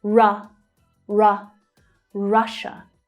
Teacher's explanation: The stress is on the first syllable there and it is a short vowel sound the /ʌ/ vowel sound as in 'up'